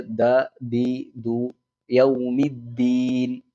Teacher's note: ദാലാവുമ്പോൾ അവിടെ കുറച്ച് അമർത്തിയിട്ട് കാറ്റ് പുറപ്പെടാത്ത രൂപത്തിൽ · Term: ദാൽ